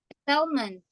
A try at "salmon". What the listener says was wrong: L-nya nggak dibaca. L-nya nggak dibaca.